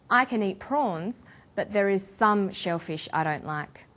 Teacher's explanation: about a restricted or limited amount of something we put the stress on the word some